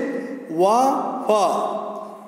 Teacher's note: दंतोष्ठ निचले होंठ व ऊपरी दांतों से